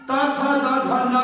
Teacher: ट वर का उच्चारण ट ठ ड ढ का उच्चारण मूर्धा या मूर्धन्य से होता है। त थ द ध न का उच्चारण दंत या दंत्य से होता है